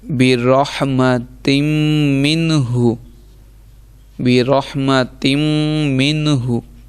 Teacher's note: اب دیکھیں نون ساکن کے بعد حروف حلقی میں سے ہا آ رہا ہے، اس لیے منہ پڑھتے ہیں، اسے پڑھ رہے ہیں اور گنہ نہیں، یعنی ناک میں آواز نہیں ہم جانے دے رہے